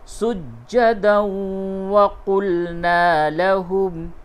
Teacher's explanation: تنوین کے بعد واو ہے، ادغام مع الغنہ ہوگا